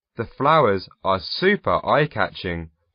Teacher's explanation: when he said the flowers are super eye-catching you could hear him emphasize the super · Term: stress